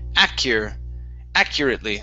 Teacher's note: stress at the beginning actually